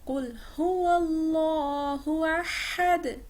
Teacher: قاف موٹا، ہا شارپ، آخر میں دال پر قلقلہ